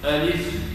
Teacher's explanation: فالألف لا تمد أبدا، فننطقها بهذه الكيفية ألف ونكسر اللام، لا نقول ألف ألف ألف ألف ألف ألف.